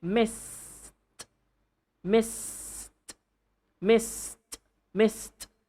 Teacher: the last sound is S for the word miss, right? So it's an unvoiced sound.